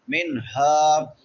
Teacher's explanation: منہا ہا کے بعد الف مدہ ہے، ایک الف کے برابر لمبا کریں گے